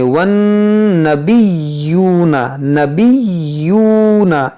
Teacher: یہاں پر یا مشدد ہے اور نون مشدد ہے، اس میں غنہ کریں گے